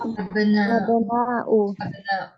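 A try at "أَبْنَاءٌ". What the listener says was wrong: Pakai tanwin Bu ya. Abnaun. Beda sama jumala'u sama atiba'u beda ya. Memang dia mempunyai pola yang mana pola tersebut tidak boleh tanwin.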